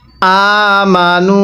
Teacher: এই যে নুনের মধ্যে আমরা গুন্নাহ করবো কারণ মিমে নুনের তাজদিদ হলে সেখানে গুন্নাহ করা ওয়াজিব হয়ে যায় তাহলে এখানে নুনের উপর তাজদিদ আছে এজন্য আমরা এই নুনটিকে গুন্নাহ